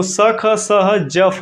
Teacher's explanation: मतलब जिसको बोलने में ऊष्मा उत्पन्न होती है, संघर्षी व्यंजन स ख स ह ज फ।